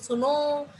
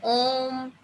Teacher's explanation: जो लास्ट में ओ का साउंड आ रहा है ना, लंबा खींच रही हूँ उसको, मैंने सिर्फ सुनो करके नहीं छोड़ा ना, वहां क्या है प्लुप्त स्वर आया है।